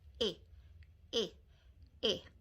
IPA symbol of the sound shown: ɪ